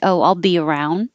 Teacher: you won't hear the d um if it's at the end of the sentence